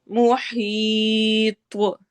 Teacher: या मद्दा और त्वा को मोटा पढ़ना है, कलकला करते हुए हमने यहाँ पे स्टॉप करना है।